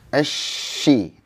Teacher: Tengah tenggorokan, tengah lidah. Tengah lidah ke langit-langit. Insya Allah kalau sudah tengah lidahnya sudah naik, tapi jangan nempel ya, jangan nempel ke langit-langit. Kasih rongga untuk udara.